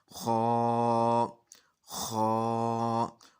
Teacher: ये मुंह को खुला रखेंगे थोड़ा, और आवाज़ को पुर करके पढ़ने की कोशिश करेंगे, तो पढ़ा जाएगा खा, खा।